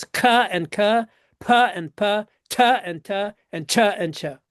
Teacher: four consonants that have aspirated and unaspirated pairs